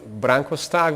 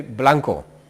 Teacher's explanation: in Chinese language you don't have the sound of r. They would say not Branko Stark, they would say Blanco.